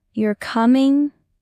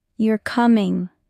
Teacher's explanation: You're coming with rising intonation equals it's a question. You're coming with falling intonation equals it's a statement.